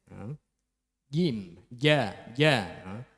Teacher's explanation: Padahal jim itu huruf qalqalah tidak boleh ada angin yang keluar. Jadi makhrajnya itu di tengah lidah menempel di langit-langit.